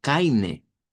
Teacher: un alemán sureño, austriaco, esto nos lo podría leer como Kaine, como que fuera una E